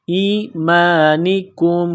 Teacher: کاف کو میم کے ساتھ ملانا ہے، کاف کو باریک کرنا ہے